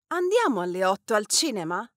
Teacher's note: want to emphasize usually but this is not a fixed rule the stressed element is the one that comes after the verb